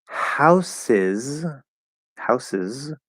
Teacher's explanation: that second s is going to be a z in the plural